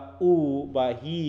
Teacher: যখন আমরা উই উচ্চারণ করি তখন জীবটা উপরের দিকে উঠছে একটু হালকা একদম যে তালুতে লেগে যাচ্ছে তা না